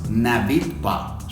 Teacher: ne habite pas, y lo que vamos a hacer es pegarla. Incluso la H, como es muda, si se fijan, el sonido es una vocal